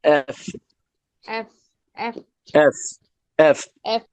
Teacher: উপরের দাঁত দিয়ে ঠোঁটে একটা কামড় দিয়ে একটু বাতাস বের করেন